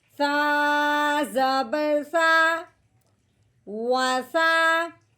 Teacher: ہاں جی، یہ سا ہے، تا کے بعد جو سا جس کو ہم سا کہتے ہیں، یہ سا نہیں ہے، اس کو نرمی سے پڑھتے ہیں سا کر کے، ٹھیک ہے۔ سا جو ہوتا ہے وہ سیٹی والی آواز نہیں نکالتا